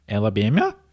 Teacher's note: She's doing a good job on that rising intonation that a lot of Kiwis speak in.